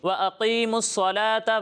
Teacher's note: یہاں صاد کی آواز سین کی طرح نہیں لگنی چاہیے. صاد کو ابھی ہی بتایا کہ پر پڑھنا ہے، سین کو ہم باریک پڑھتے ہیں، ٹھیک ہے.